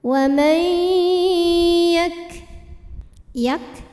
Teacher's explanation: huruf kafnya jangan ketinggalan hamznya atau anginnya ya. Untuk kaf yang sukun hamznya belakangan.